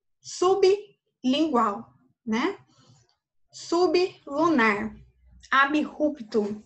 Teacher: Eu pronuncio o B e o R separado, dá para perceber essa diferença